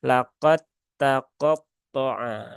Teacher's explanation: Jangan diizharkan. Berarti kalau dibaca dengan idgham, idgham yang sempurna ya, idgham kamil, maka ini berarti dalnya dianggap hilang, maka langsung laqad taqatta'a ya, laqad ta gitu kan. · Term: idgham mutajanisain